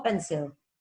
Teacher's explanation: ahora lo decimos rápido y la I casi no suena